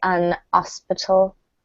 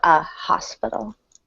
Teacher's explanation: in some British accents the H is silent